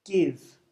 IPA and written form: gIv (give)